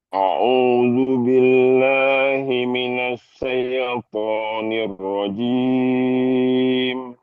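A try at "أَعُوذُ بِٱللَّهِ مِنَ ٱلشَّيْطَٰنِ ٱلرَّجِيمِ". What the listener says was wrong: Nah, bunyi syaknya maksimalkan bunyinya nash. Kalau di saya belum begitu tampak shinnya. Coba Ustadz bilang ash. Lagi ash.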